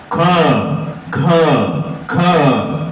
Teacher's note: महाप्राण देखिए, ख ख ख ख, बहुत प्राण यूज हो रहे हैं ना